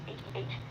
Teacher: it's kind of like trying to say h but putting a more rough sound it's kind of like from the back of your throat